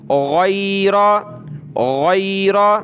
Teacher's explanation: غین کو موٹا کر کے گلے سے نکالنا ہے۔